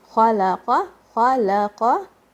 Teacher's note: kha is heavy and qaf is heavy, lam is light